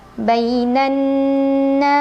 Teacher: cara membacanya Nun didengungkan ditahan kurang lebih dua harakat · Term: gunnah musyaddadah